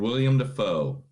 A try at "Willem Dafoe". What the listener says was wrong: Not William. He spells it Willem. So it's Willem.